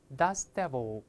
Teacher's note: dust▁读快了之后，那个▁t▁听不到了